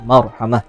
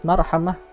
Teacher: tafkhim itu ra-nya dihukumi tebal.